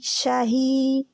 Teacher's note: شاہی میں یا جزم والی آ گئی، یعنی کہ جہاں پہ مد ہو رہی ہے، مد اصلی ہو رہی ہے، جہاں مد، اس کو کیا کہتے ہیں، اوریجنل مد بھی انگلش میں کہتے ہیں، مد اصلی. شاہی 2 حرکات کے برابر کھینچنا ہے